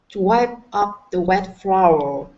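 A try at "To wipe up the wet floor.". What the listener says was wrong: Good, good, much better.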